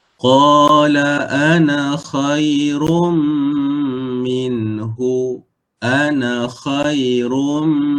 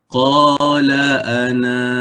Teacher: Sekiranya kita waqaf di sini, contohlah ya, kita waqaf di sini, maka alif ini berfungsi. Jadi na kena baca dengan dua harakat ketika waqaf. Jadi bacaannya qala ana.